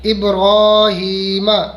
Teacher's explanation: یہاں را کو کھینچیں گے اور ہا کو کھینچیں گے